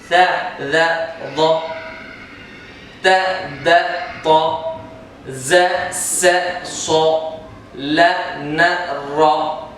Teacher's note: زبان کی نوک سے ادا ہونے والے حروف 12 ہیں